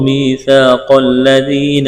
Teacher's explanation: قاف کو موٹا کرنا ہے، ذال کو نرم کرنا ہے، یا مدہ ہے، ایک الف کے برابر کھینچنا ہے